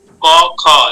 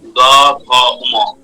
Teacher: ঘোষে কি হচ্ছে, আমাদের স্বরতন্ত্রী কাঁপছে, তাই আমাদের সেই ঘোষ, সেই বর্ণগুলো আমরা যখন উচ্চারণ করি, প্রনাউন্স করি, গম্ভীর প্রকৃতির হয়।